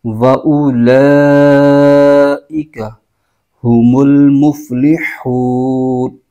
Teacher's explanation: وَأُ حمزہ پر پیش وَأُ، اور آگے وہی قاعدہ مد حروف مدہ کے بعد حمزہ آ رہا ہے اسی کلمے میں، تو یہاں پر مد متصل ہو رہی ہے، اس کو 2 الف کی مقدار لمبا کھینچ کے پڑھیں گے